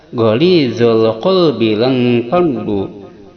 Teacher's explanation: Ghalizal alif lamnya qamariyah yang wajib idhar, lamnya dibaca jelas.